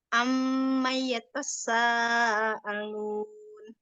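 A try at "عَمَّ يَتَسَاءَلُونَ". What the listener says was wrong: Nah, itu nanti dilihat itu kan nggak ada tasdid, jadi nggak yatasa gitu, bukan yatasa, yatasa nggak ada tasdidnya.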